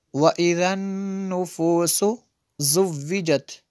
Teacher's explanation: یہاں پہ نون میں شدد ہے، غنہ ہوگا۔